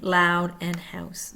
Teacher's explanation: That would be Canadian raising.